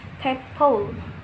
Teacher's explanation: The first, plus coronal sounds that are those articulated with tongue tip or blade raised, such as the t, d, and l sounds in tadpole